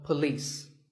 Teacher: police with the stress on lease